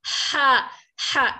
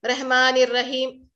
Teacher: हा को हलक से बाहर निकालना है, हवा बाहर निकलेगी और आइन की आवाज तो अंदर से निकलेगी ही लेकिन हवा बाहर नहीं आएगी।